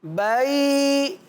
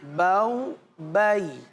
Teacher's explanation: کھینچنا نہیں ہے ہمیں، حروف لین کو نرمی سے پڑھنا ہے